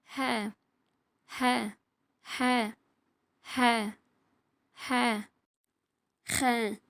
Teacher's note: நடு தொண்டையிலிருந்து இந்த எழுத்து வெளியாகணும் இப்ப இங்கிலீஷ்ல சொல்லுவோம்ல ஹவுஸ்ன்னு அந்த மாதிரி ஹ ஹ இந்த எழுத்து நம்ம